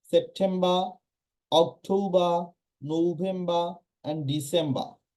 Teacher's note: সময় করে না সো এখানে তারা আর এর উচ্চারণ করে না অর্থাৎ ওয়ার্ডের শেষে যদি আর থাকে সেই আর এর উচ্চারণ হয় না